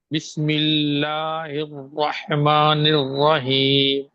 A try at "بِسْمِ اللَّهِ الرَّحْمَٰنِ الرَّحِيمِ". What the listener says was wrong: را کو موٹا پڑھ رہے ہیں آپ، کیوں؟ باریک باریک پڑھنا ہے یا موٹا پڑھنا ہے؟